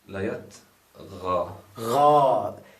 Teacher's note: There is a mad at the end. So that mad makes it long.